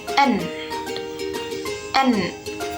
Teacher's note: nasal, yaitu saat kita menutup saluran suara pada rongga mulut sehingga mengeluarkan udara pada rongga hidung